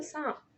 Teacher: سانپ میں بھی نون ہمارا نون غنہ ہے اور یہ ناک سے پڑھا جا رہا ہے